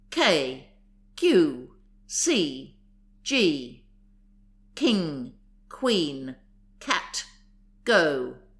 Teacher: raise the tongue near the root and strike the palate forcibly almost from the throat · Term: linguals root tongue